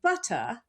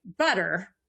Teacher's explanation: in British English, especially Southern British English, you drop the R. But in American English, we kept the R.